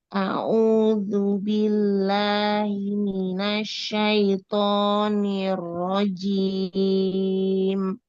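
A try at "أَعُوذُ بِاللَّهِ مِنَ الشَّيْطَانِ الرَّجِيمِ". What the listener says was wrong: Mat, jangan masuk hidung. Asyaitonir rajim.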